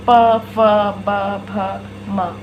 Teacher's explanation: हमारे दोनों होंठ आपस में एक दूसरे को स्पर्श करते हुए ये अक्षर निकल रहे हैं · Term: ओष्ठ